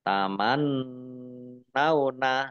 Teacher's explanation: nun tasdid dibaca gunah atau mendengung ditahan 2 harokat